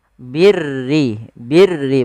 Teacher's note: yaitu huruf ro yang dibaca dengan tipis Yaitu ro tarq yang di mana huruf rnya berharakat dengan berharakat